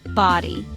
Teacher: Two-syllable word, stress is on first syllable.